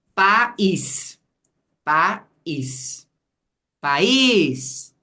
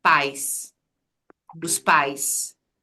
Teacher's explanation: a gente abre a boca uma vez só e aí o i virou semivogal então tem a ver com o movimento da boca mesmo país